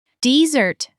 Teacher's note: stress on the second syllable, means to run away from something, especially the military.